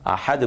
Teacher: زیر کی تنوین اور پیش کی تنوین جو ہے وہ ساکن ہو جاتی ہے